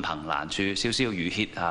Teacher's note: 呢个歇字咧，亦都系入声字